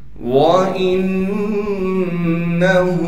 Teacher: الْكَافِرِينَ وَإِنَّهُ لَحَقُّ الْيَقِينِ، واو کو صاف کر کے پڑھیں گے، حمزہ کو نون مشدد سے ملائیں گے غنہ کے ساتھ